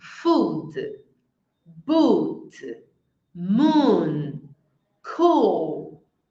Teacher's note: é o som do U e é um U longo. É como se fosse o nosso U de uva, mas ele é longuinho.